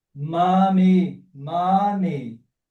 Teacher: M seguido de vogal não muda, continua labial.